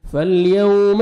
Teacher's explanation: فالیوم واولین ہے نرمی سے ادا کریں گے، واو جزم سے پہلے زبر ہے